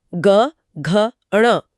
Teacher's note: लेकिन अगले तीन अक्षरों ग, घ, ण में गले के अंदर एक झनझनाहट महसूस होगी जो कि सघोष है। · अगर उंगलियों को गले पर रखा जाए तो पहले 2 अक्षरों में, जैसे क, ख, गले में कोई कंपन महसूस नहीं होगा, ये अघोष है। लेकिन अगले 3 अक्षरों ग, घ, ण में गले के अंदर एक झंझनाहट महसूस होगी, जो कि सघोष है